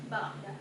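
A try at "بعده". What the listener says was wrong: ba'dah pakai ha. La nabiyya ba'dah.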